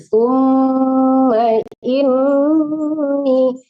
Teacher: Sumnya dengung, tapi ma-nya jangan ditahan. Nggak ada panjang di situ ya.